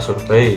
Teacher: karena kata survei itu mengandung diftong EI. Dan itu dalam suku kata kedua itu satu hembusan suara.